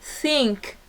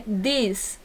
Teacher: Essa com a língua entre dentes, no caso que é pronunciado na palavra think, e o outro que é a língua atrás do dente. This. Atrás do dente da parte inferior da boca, né?